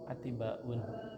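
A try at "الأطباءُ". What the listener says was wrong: Attiba'u. Dilarang tanwin.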